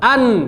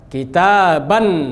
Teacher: Ujung lidah bertemu dengan langit. Catat, nun sukun makhrajnya adalah ujung lidah bertemu dengan langit-langit